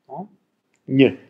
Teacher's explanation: Einen spanischen Laut, ich habe ihn noch nicht verstanden. Ach, das N mit der Tilde, na, das ist ein palatales N.